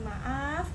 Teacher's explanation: Bunyi A diucapkan lebih lama menunjukkan durasi panjang. Kata maaf yang diucapkan dengan durasi yang lebih panjang seperti maaf dapat menyiratkan permintaan maaf yang lebih tulus atau dramatis. Sedangkan maaf yang diucapkan cepat atau pendek bisa terdengar kurang sungguh-sungguh.